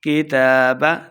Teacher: تا کے اوپر کھڑی حرکات ہے، اس لیے 2 حرکات لمبا کرنا ہے